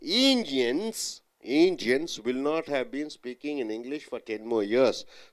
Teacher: what are the nouns here Indians English years so all three you have to stress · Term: nouns are stressed